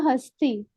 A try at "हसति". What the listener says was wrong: हसती है ना, हस्ती बोलोगे तो ऐसा रहेगा कि स आधा है, पर स पूरा है ना। हसती, हसती पूरा